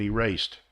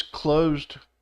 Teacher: it's because erased the S is harder it's an S sound closed is a z sound so usually usually when there's one s it makes a z